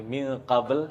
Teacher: Jadi bukan pengucapkan ming tapi min ah ada ghunah di situ. Tercampur antara suara nun dengan qf bukan mim. Ahab ilq. Kemudian